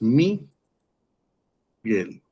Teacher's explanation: La sílaba tónica es gel.